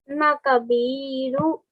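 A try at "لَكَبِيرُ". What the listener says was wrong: Lakabiru. Remember, this is a lam, so you'll say la kabiru.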